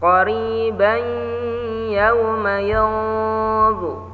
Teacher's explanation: Cara bacanya didengungkan, ditahan dengungnya. Qariban, tanwin patah bertemu ya, idgham bi gunnah, didengungkan, ditahan dengungnya.